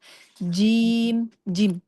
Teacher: Sempurnakan dia di tengah lidah bertemu dengan langit-langit tengah.